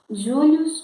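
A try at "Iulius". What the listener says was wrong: Não é Július, é Július. Sempre lembrando que a letra J não faz parte do alfabeto latino, né? É I, Július.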